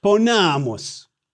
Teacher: long A in the penult or second to the last syllable. A long vowel in the penult means that the syllable gets the accent.